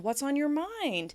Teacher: doubtful rise at the end of the question is going to invite the person to share because you're showing concern for them.